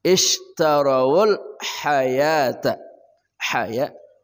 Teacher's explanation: ha dari tengah kerongkongan